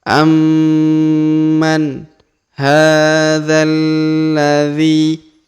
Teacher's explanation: Huruf dza langsung kita masukkan ke huruf lam berharokat tasdid ya.